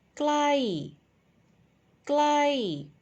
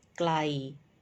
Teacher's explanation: the first one is falling tone and the second one uh is a midtone so no symbol on top